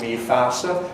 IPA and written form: miː ˈfaːsə (my face)